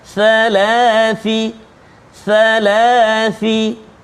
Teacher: Hujung lidah keluar sikit kena gigi kacip atas.